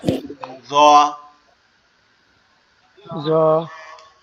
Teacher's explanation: জটা আমাদের জিহ্বার আগার সামনে দুই দাঁতের আগার সাথে লাগবে, লেগে উচ্চারিত হবে জ। জ।